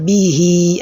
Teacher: So you can see I said bihi, I elongated the ha'un, right?